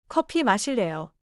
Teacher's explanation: Your lips stayed flat on 커.